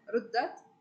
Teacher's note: الحالات التي تفخم فيها الراء هي ان تكون مفتوحه او مضمومه كما في كلمه ردت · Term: مفخمه